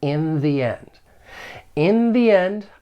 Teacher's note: the strong form the you will use when the next word begins with a vowel sound